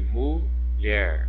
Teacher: o mu, aqui eu tenho uma sílaba mais fraca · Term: sílaba átona